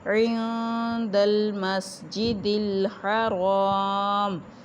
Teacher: عند المسجد الحرام نون ساکن کے بعد دال حروف حلقی میں سے نہیں ہے، نہ ہی حروف یرملون میں سے ہے، اس لیے نون کی آواز کو یہاں پہ چھپایا جائے گا، اخفا ہوگا